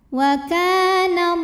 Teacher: ada Alif didahului fathah maka huruf Kaf panjang dua harakat waallah lam jalalah dibunyikan secara tafkhim karena huruf sebelumnya fathah maka dibacanya l tebal pangkal lidah dinaikkan waallah kemudian Alif lamnya dinamakan dengan alif lam syamsiyah karena alif